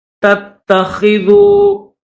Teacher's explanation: تو دوسری تا کو ہم دبا کر سختی کے ساتھ پڑھیں گے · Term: تشدید